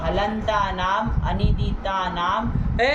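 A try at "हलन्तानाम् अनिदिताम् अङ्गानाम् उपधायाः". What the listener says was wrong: अनिदिता नाम कहाँ लिखा बेवकूफ तरीका? अलग अलग नहीं पढ़ पाते हो वृत्ति को? अरे षष्ठ्यंत पद अलग अलग बोलो।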